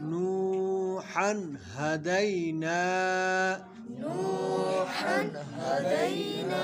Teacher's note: تنوین کے بعد حروف حلقی میں سے ہا آ رہا ہے تو یہاں پہ اظہار ہوگا، یعنی غنہ نہیں کریں گے۔ اب نون میں واو مدہ ہے نو میں، اور ہدئی میں یا لین ہے، نو کو لمبا کر کے پڑھیں گے اور ہدائی کو بغیر کھینچے بغیر جھٹکا دیے نرمی سے معروف پڑھیں گے۔